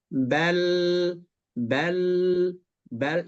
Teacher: Ingat wilayahnya wilayah gusi, jangan wilayah langit-langit.